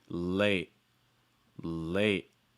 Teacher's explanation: you can also pronounce this with a held sound so you can use a stop t as well